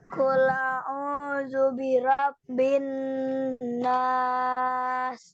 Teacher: Bin nas itu ditahan dulu. Jangan binas, kecepatan nggak boleh.